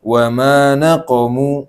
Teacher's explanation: diperhatikan di sini panjangnya wa ma naqamu itu 2 harokat aja, jangan berlebihan